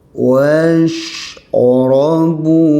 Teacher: Shin tidak ada lantunan ya. Jangan ada qalqalah.